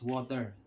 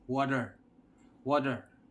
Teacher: as a Filipino we pronounce water as water the T sounds T but in the other country you might hear them say water water the T sounds like d